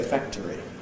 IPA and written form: ˈfæktəri (factory)